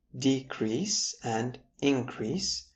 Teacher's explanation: if the shift is on the first syllable of these words decrease and increase, we have a noun